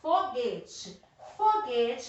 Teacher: Qual é a sílaba mais forte? É o foguete. É o G. Então, ela não é a última, ela é a penúltima. Então, ela é paroxítona.